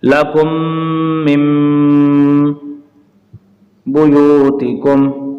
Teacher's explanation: نون ساکن کے بعد با آ گیا اس لیے اس میں اقلاب یعنی نون کی آواز کو میم کی آواز سے بدل کر پڑھیں گے